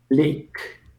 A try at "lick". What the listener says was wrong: Lick. This is not leak. It's lick, like eh.